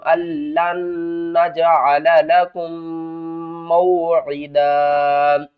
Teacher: اس نون کو نہیں پڑھنا، کیوں نہیں پڑھنا، کیونکہ نون کے آگے دوسری نون بھی آ رہی ہے اور اس کے اوپر تشدید ہے